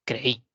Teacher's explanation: es vocal abierta y la i es vocal cerrada entonces pero la mayor fuerza de voz la tiene la vocal cerrada creí por lo tanto hacemos dos emisiones de Voces son dos